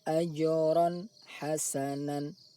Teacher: bunyi tanwin dibaca jelas, tidak boleh dibaca dengung ataupun samar antara jelas dan dengung. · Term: izhar halki